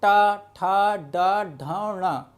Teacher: जब भी जिन व्यंजन वर्णों के उच्चारण करने में आपकी जीवा का अग्रभाग जो है रोटेट हो जाएगा वह क्या कहलाएंगे, आपके मूर्धन्य